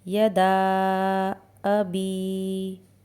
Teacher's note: इसी तरह अभी में या मद्दा है। इसे भी टू काउंट्स खींचना होता है।